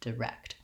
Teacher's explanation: in this word we have second syllable stress. So that means that the rect syllable is short and the d syllable the rect syllable is long and the d syllable is short, direct.